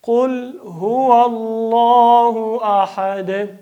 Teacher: د وقف له وجې نه دا دوه پیښونه په سکون باندې بدلوو. دال د ح سره په سکون بدلوو او دلته قلقله کوو.